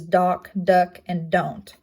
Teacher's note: Next stop consonant is the D, as in d. It is an alveolar placement. It is voiced, and it shows up in words such as dock, duck, and don't, all making the d sound.